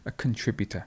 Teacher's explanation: notice here how you have the stress in the middle